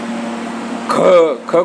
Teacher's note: ख को बोलने में हमारी ऊर्जा अधिक क्षय हो रही है, यानी कि अघोष, और ये महाप्राण है